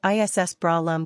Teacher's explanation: use a hard s sound as in SAS for the first word it should not sound like the English word is note that Breyer rhymes with raw and that the second word